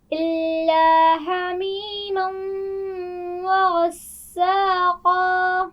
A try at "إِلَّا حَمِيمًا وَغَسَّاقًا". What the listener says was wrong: حمیم، ہا کے مخرج کو واضح کیجئے.